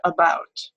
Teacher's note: instead of being low it is a mid Central unrounded vowel and this one has a special name it's called schah right